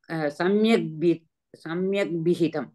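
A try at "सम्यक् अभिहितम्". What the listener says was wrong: samyak abhihitam akar is very important akaraga na gachati only kakarasya dakaraga bhavati you have to say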